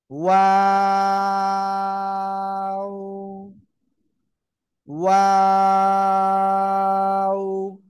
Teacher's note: ওয়াও অক্ষরটা, এই যে দুই ঠোঁট, দুই ঠোঁট গোল করিয়া তিন আলিফটা নিয়ে উচ্চারণ করতে হয়